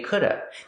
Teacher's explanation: people will not pronounce the V sound at the end could have they just say could have this happens only before